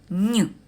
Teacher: язик упирається в нижні зуби губи розтягнуті повітря натрапляючи на перешкоду перед язиком і зубами проходить через ніс розмикає зуби і з голосом виходить із ротової порожнини розтягніть ніточку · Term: звук нь